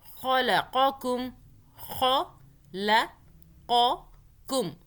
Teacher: قاف کو موٹا، خو کو خو، خا باریک نہیں پڑھنا